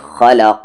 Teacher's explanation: الخا heavy letters میں سے ہے اور قاف ہیوی لیٹرز میں سے ہے